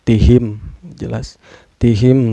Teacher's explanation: Cara bacanya mim sukunnya dibaca harus jelas ya, gak boleh dengung dan gak boleh memantul. Tihim jelas, tihim sa mad tobi'i, karena ada alif sebelumnya berbaris patah. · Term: izhar sapawi